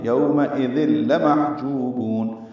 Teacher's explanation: یوم حمزہ یا کی شکل میں جلدی اور معروف پڑھیں گے، تنوین کے بعد لام آنے کی وجہ سے ذل، ذال کو نرمی سے پڑھتے ہوئے لام سے ملائیں گے ، ادغام کامل ہے، یومئذ لمحجوبون، لام کو جلدی پڑھنا ہے، · لام کو جلدی پڑھنا ہے، ہا ساکن پہ ہمس ہے